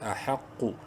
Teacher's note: قاف کو منہ بھر کے پڑھیں گے